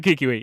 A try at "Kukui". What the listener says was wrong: Kukui. Kikui. You keep saying Kikui.